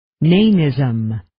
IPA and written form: 'neɪnɪzəm (Nanism)